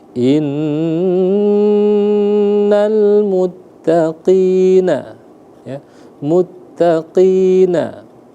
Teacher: Kenapa tadi teman-teman kita ditekan ya, ditahan selama 2 harokat di sana? Karena di sana ada nun bertasydid ya